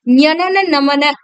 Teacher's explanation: ஞனன நமன அப்படிங்கும்போது மூக்கு பகுதியில தான் அந்த அழுத்தம் ஏற்படும். சோ அப்ப மெல்லின எழுத்துக்கள் எல்லாம் எங்க இருந்து தோன்றுது அப்படின்னா மூக்கு பகுதியில இருந்து பிறக்குது. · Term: மெல்லினம்